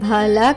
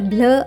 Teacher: బిఎల్ యొక్క శబ్దం బాలా కాకుండా బ్ల అవుతుంది, కాబట్టి బిఎల్ఓఎం యొక్క ఉచ్చారణ అవుతుంది బ్లూమ్.